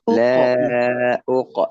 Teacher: Baik, qafnya qalqalah, pantulkan.